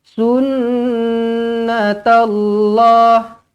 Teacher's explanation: Nun sabdu wajibul gunnah. Dengungkan 2 harakat.